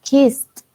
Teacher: Cuando tenemos como la doble S después de en un verbo al final, pronunciamos esta ed como una T.